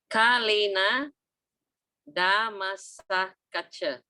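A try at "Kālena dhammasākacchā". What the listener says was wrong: Not Sakacha, Sakacha. See that issue? Kalena Dhamma Sakacha, because there's long A here, see? Long A.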